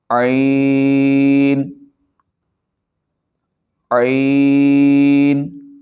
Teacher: عین حلق کے درمیان سے ادا ہوتا ہے۔